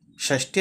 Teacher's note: షష్టి అని అల్పప్రాణ అక్షరము ట పలకాలి.